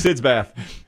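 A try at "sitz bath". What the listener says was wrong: Sits, not SIDS.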